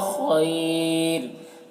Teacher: خیر خا حروف مستعلیہ میں سے ہے اور یہاں پر یا لین ہے اور یہاں پر وقف کی صورت میں را کا جو دو پیش کی تنوین ہے وہ سکون سے بدل جائے گا، تو پھر را کو باریک پڑھیں گے. اور وقف کی صورت میں یہاں پر مد لین عارض ہوگا. اس میں طول توسط قصر تینوں جائز ہوتا ہے لیکن قصر بہتر ہوتا ہے، یعنی ایک الف کے برابر کھینچ کر پڑھنا بہتر ہوتا ہے.